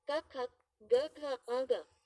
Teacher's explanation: कंठ्य guttural ध्वनियां जो कंठ तले से उच्चारित होती हैं।